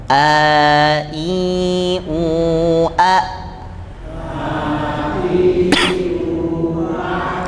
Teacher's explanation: jadi bunyinya pasti berbeda ya yang pertama itu disukunkan yang Hamzah ketika disukunkan terhenti di Pangkal karena dia sifatnya asyiddah asyiddah itu tidak mengalir suaranya